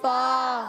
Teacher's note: فا کی ادائیگی ہوتی ہے اوپر والے دانتوں کے کنارے۔ جب اوپر والے دانتوں کے کنارے نیچے والے ہونٹ کے تر حصے سے لگتے ہیں تو ادا ہوتا ہے فا